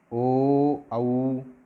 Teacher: कंठ से आवाज़ आ रही है लेकिन ओष्ठ आपके गोल गोल हो रहे हैं